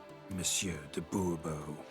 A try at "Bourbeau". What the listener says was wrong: The emphasis falls on the last syllable. Bourbeau?